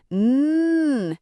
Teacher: It is a long steady hum. N. It feels a bit buzzy. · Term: nasal sound